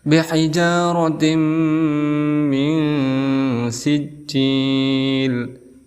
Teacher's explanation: Setelah itu rotim, di sini ada ta marbutoh berharokat kasrah tain bertemu dengan huruf idgham yaitu mim, maka dihukumi sebagai idgham bi gunnah. Cara membacanya kita tasdidkan ke huruf mim, kemudian kita dengungkan 2 harokat, boleh sampai 3 harokat.